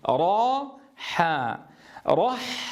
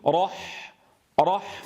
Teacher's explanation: انظروا كيف ينزل الصوت من التفخيم ثم إلى الترقيق،